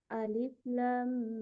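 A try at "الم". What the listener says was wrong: Ditahan. Ditahan dulu lanya 6 harokat ya. Alif lam mim. Ya, ditahan lanya dulu 6 harokat baru didengungkan ke huruf mim ya.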